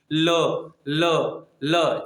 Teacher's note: ल, पार्श्विक, ल ल ल, जीभ से टकरा कर वायु जा रही है, इसलिए इसे कहा गया पार्श्विक व्यंजन